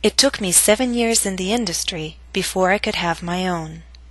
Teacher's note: your voice must reach a lower note on own compared to industry. Own must reach a lower pitch to signal the end of the statement. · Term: falling intonation